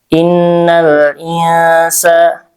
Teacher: Innal insana alif lam di sini alif lamnya qamariah. Jadi dibaca dengan jelas izhar innal insa insa insa di situ ada ikhfa ausad ya karena nun sukun bertemu dengan sin ya huruf ikhfa dibacanya ee nun sukunnya samar ya dan disertai dengan gunah atau dengung.